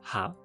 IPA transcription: ha